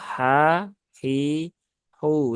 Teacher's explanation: tidak perlu diucapkan dengan menekan ya menekan Tengah tenggorokan secara berlebihan Jadi cukup digetarkan saja Tengah tenggorokannya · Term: huruf H